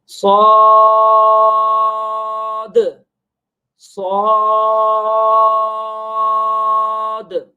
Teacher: دال کو واضح طور پر اس میں قلقلہ کر کے پڑھیں گے, اگرچہ یہاں پر دال موجود نہیں ہے.